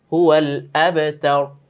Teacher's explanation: র গুলো একটু মোটা করে পড়তে হবে